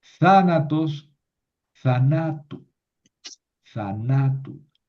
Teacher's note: Y como en el genitivo le añado una vocal larga, tengo que mover el acento.